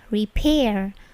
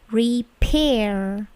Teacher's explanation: Perhatikan bunyi P-nya itu plosif, repair.